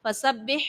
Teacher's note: فسبح میں با مشدد ہے، اس کو خوب جماؤں کے ساتھ پڑھیں گے